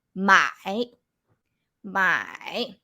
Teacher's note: with the third tone here you have to go low